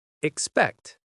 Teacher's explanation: The word expect in fast English often drops the first vowel. · The stress is on the second part: xPÉCT.